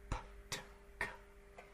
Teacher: We start with the air completely stopped.